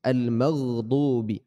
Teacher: Huruf ghain keluar dari tenggorokan bagian atas jemaah Allah, sama seperti kita membaca huruf kha.